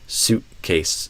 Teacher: there's no audible release of the t sound. Instead, you hear the release as the k sound. So s the sound suddenly stops and it has that special sound for the stop and then we move into the K sound.